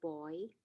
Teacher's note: moving from open o to a small capital i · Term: diphthongs